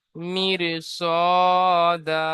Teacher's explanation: তো কি বলবেন, র সাকিনের পূর্বে জের এসেছে, র বারিক হওয়ার কথা ছিল, পরে হুরুফে মুস্তালিয়া দেখেন সদ, পরে হুরুফে মুস্তালিয়া এসে গিয়েছে, তাই র কে পুর করে পড়তে হবে।